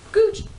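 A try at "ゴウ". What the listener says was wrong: Go. It's go. It's go. Because in the subtitles, it's more like goo, but it's pronounced go. It's go.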